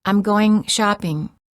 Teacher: To create the NG sound, raise the back of the tongue and let it touch the soft palate, which is the back soft area of your mouth. Don't release your tongue when you say the G, or just release it slightly. The mistake of saying goin' shopping is that the tip of the tongue is touching the area right behind the upper front teeth for the sound. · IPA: /ŋ/